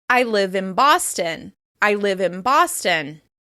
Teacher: the /n/ sound that appears before the city name changes into the /m/ sound to flow more easily into the /b/ sound that follows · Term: assimilation